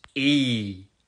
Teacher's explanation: un i dont il faudra prolonger la prononciation afin de marquer la différence avec le i court. La bouche est légèrement ouverte, on tire sur les lèvres, on sort un i bien tendu et on fait tenir le son. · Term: i long